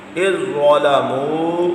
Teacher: زا پر تشدید ہے، حمزہ سے ملائیں گے، زال کو چھوڑ دیں گے، نہیں پڑھیں گے